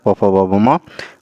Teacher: त थ द ध न जो है ये दंत में आ जाता है, प फ ब भ म ओष्ठ में आ जाता है